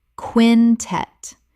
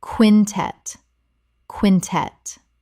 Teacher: 2 syllables with the stress on the second.